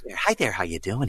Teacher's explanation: He's very breathy, and then maybe he'll go down.